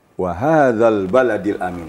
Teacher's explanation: Wal baladil Amin Di Sini yang harus Kita waspadai baladi Negeri jangan kita baca panjang baladi jangan jadi k kadang ada yang tanpa sengaja lamnya dipanjangkan ba